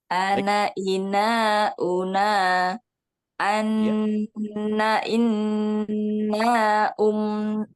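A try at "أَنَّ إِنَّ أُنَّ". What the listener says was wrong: Oke, hati-hati, jangan tergesa-gesa, Bu. Nah, di sini apa sepertinya terlalu cepat. ya, terdengar cepat ya. Ana ina una anna inna unna.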